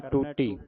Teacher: ਟੁੱਟੀ ਨਹੀਂ ਕਹਿਣਾ। ਦਲੈਂਕੜਾਂ ਦੇ ਨਾਲ ਉਚਾਰਨ ਕਰਨਾ